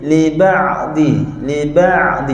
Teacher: Saya dengar tadi masa sebut liba, kita sebut liba'di. Ain tak nak bunyi putus. Ain bunyi hidup sikit.